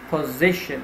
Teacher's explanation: So we have three syllables. You have to stress the middle one.